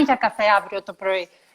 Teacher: every syllable is kind of stressed